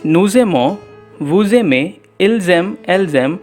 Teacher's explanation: When a word ending with s is followed by a word beginning with vowel a, e, I, o, u, or pronouncing them in French as a, u, e, o, and u, then the lajo occurs and s and vowel combines to make a z sound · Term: liaison